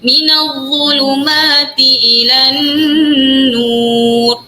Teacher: Dha kena keluar lidah, hujung lidah dia.